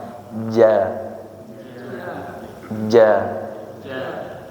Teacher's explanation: huruf Jim pengucapannya tanpa disertai dengan angin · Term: jahr